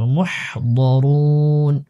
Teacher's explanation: ওয়াকফ হলে নুনের মধ্যে সাকিন দিয়ে দিব